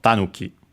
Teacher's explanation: Actually accented on the first syllable, so tanuki.